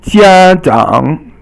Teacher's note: 家 is first tone, and 长 is third tone.